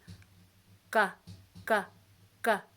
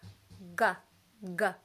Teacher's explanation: I can feel a slight vibration meaning my voice is on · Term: G sound